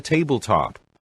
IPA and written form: ˈteɪblˌtɒp (tabletop)